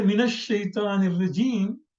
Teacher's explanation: Instead of min, we say mina. We put fatah on nun, because min and a shaitan also begins with sakin.